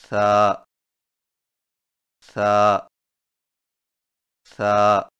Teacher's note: ثا کی ادائیگی میں زبان کی نوک کو سامنے والے اوپر کے دو دانتوں کے اندرونی کناروں سے نرمی سے لگا کر باریک آواز میں پڑھیں